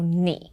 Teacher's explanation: Now notice that I paused after 你. So 你 is still the third tone because the person asking the question is a bit hesitant.